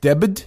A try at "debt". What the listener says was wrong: Debt. You don't pronounce the B. It's silent.